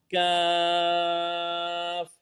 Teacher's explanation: زبان کی جڑ اور تالو کے سخت حصہ سے ادا ہوگا